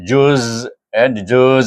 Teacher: Jim waw zai juz juz dengan berakhir bunyinya berakhir dengan safir. Huruf zai itu sifat safir sama dengan sin juga.